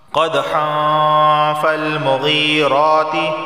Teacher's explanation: کے بعد فا آ گیا، فا حروف اخفا میں سے ہے، اخفا والا گنہ ہوگا، یعنی زبان کی نوک کو اوپر کے تالو سے نہیں لگائیں گے اور گنہ کریں گے